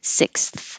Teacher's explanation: after your tongue is making the S, it has to go down a little further for the TH, but still be loose enough for air to go over it and have airflow.